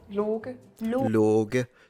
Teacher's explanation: It's a K pronounced like a G. Softly. We have very soft G's, yeah, usually.